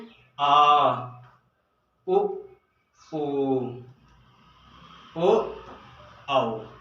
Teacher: अगर हम बड़ा आ बोलेंगे दोस्तों तो ये पश्च में आ रहा है